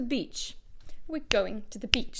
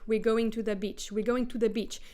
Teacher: we're stressing go in going and beach because these are the two main stresses. Everything else is reduced. It gets shorter to the.